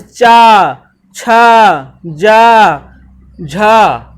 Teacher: स्पर्श संघर्षी व्यंजन, क्योंकि स्पर्श भी है और संघर्ष भी है, अधिक ऊर्जा इसमें लगती है।